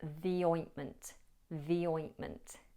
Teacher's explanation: The here is pronounced the because the following sound is a vowel sound, oi, ointment. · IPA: /ði ˈɔɪntmənt/